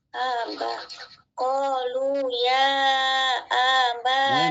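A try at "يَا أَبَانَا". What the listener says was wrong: masih panjang, jangan dipanjangin. panjang amsahnya itu, jangan dipanjang-panjang. Aba langsung, jangan aba, jangan, tapi aba. Aba.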